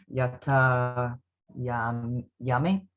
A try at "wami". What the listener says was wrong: Wa with the W, Wami.